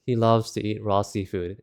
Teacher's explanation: loves to eat raw seafood in the standard American English dialect American tends to have a very flat monotonous pitch throughout